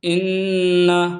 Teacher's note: ہم یہاں نون کو دو بار کیوں پڑھ رہے ہیں؟ کیونکہ نون پر تشدید ہے. یہ آپ کو چھوٹی سی دکھ رہی ہوگی، اس کو تشدید بولتے ہیں.